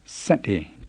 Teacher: make sure you keep the s tight and don't let any h sound come between it and the ate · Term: plane s